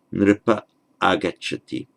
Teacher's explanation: And here we see we've got the hiatus because the nripa agacchati, and they're written as separate words. Do not join them either in pronunciation or in the writing.